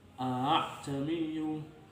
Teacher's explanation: membaca di antara hamzah dan alif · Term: tashil